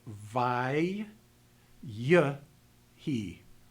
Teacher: The historic doubling would cause the word to be pronounced vai, y, he, with the schwa vocalized as you move into the rest of the word. That historic pronunciation has to be preserved even if the doubling is lost.